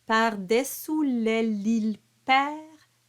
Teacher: The R is rolled, but the D is silent.